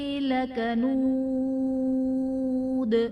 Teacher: لکنود میں واو ساکن سے پہلے پیش ہے، واو مدہ کا قاعدہ ہے، اور حرف مدہ کے بعد دال وقف کی صورت میں ساکن ہو جائے گا، یعنی یہاں پر مد عارض کا قاعدہ ہوگا، اور دال جب وقف کی صورت میں ساکن ہوگا تو حرف قلقلہ جب ساکن ہوتے ہیں تو یہاں پر قلقلہ ہم خوب ظاہر کریں گے۔